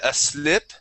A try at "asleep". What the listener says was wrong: don't be afraid of that e okay we want to say SLE asle that that's a Spanish I sound asle asleep